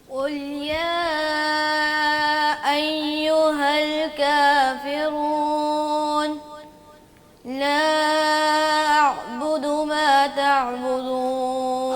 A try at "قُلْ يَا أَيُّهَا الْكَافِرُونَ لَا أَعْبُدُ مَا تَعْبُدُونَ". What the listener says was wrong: حمزہ کی آواز کو واضح کریں. دوبارہ پڑھیں ماں پہ مد کر کے دوبارہ.